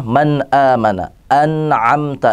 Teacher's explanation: Nah, ini alasan kenapa izhar, karena jauhnya makhraj nun mati atau tanwin. Nun mati atau tanwin itu adanya di ujung lidah, sedangkan huruful halqi adanya di tenggorokan. Jarak antara ujung lidah dengan tenggorokan itu jauh.